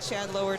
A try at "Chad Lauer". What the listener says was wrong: I feel like you're putting more emphasis on it than I usually do.